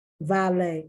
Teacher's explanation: once again french the t is not pronounced